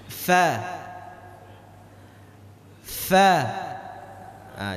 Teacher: Perut bibir bawah berjumpa dengan gigi seri atas. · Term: huruf fa